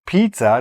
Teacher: the double Z sound is actually a TS sound.